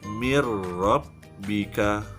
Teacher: Apabila nun mati bertemu dengan ra, maka dia idgham bila gunnah, tidak dengung. Mir-rabbika, idghamkan, kemudian tanpa dengung.